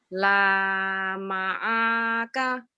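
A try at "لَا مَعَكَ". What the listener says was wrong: yang panjangnya ujungnya aja Bu. alif itu lam alif, alifnya pemanjangnya.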